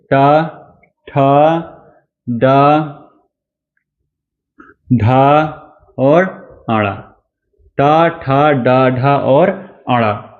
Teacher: आगे देखिए मूर्धन्य व्यंजन। जिन वर्णों का उच्चारण मूर्ध से होता है।